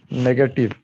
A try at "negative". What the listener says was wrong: A is shwa, negative. No, negative.